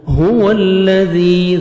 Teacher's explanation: ذال کو نرمی سے ادا کر کے 1 سیکنڈ کھینچیں گے